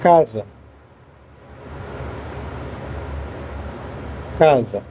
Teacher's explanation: S entre duas vogais tem som de Z.